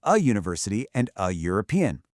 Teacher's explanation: Why? Because when you say university or European, you're actually making a U sound. That's a consonant sound.